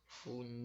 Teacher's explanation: a sílaba que foi pronunciada, que foi prolongada, foi a sílaba nil, que é a última, por isso que ela é oxítona.